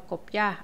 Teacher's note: Aqui na palavra copiar, a sílaba mais forte é o ar. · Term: oxítona